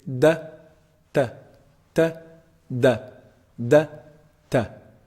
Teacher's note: the top of the tongue hits the upper incisors the roots of the upper incisors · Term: Dell